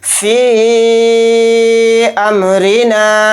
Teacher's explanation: मद्द मुनफसिल को 3 अलिफ की मिक़दार हम खींच कर पढ़ेंगे